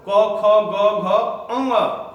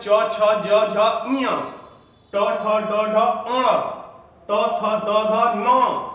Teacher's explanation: नासिका से पंचम अक्षर बोल जाते हैं